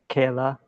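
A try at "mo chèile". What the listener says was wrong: Mochela. You have to get that that CH.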